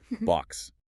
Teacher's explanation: It ends in an x, which phonetically is a k s sound. It's a hiss.